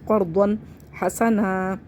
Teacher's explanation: تو یہاں پہ ہم اظہار کر کے پڑھیں گے، یعنی کہ نون تنوین کو ظاہر کر کے پڑھیں